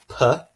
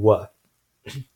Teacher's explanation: these four sounds all use both lips to kind of obstruct the airflow to some extent and produce these different types of sounds. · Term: bilabials